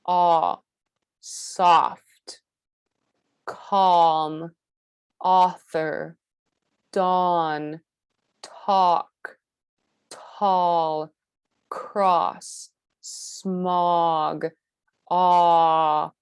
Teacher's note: They're protruded, they're pushing forward, they're far apart, and they're narrow at the corner, ah. And the back of the tongue is almost at its lowest position, but it's not quite there yet. It's in the mid-low position. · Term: open O